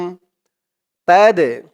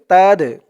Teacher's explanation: এই দালটা হচ্ছে কলকলার হরফ ধাক্কা দিয়ে পড়তে হবে কলকলা মানে ধাক্কা দিয়ে পড়া তাদে রু সুন সু বলে তিন